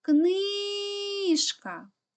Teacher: наголос падає на и тому перший склад наголошений